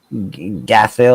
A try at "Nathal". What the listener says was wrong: The G is silent.